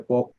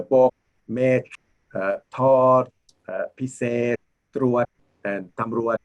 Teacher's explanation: Okay, what I call dead consonant, the ending sounds are not enunciated. So you basically press down and hold.